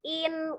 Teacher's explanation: kalau kita turunkan ujung lidahnya tuh naik in ketemu ke tempat gusinya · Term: tanwin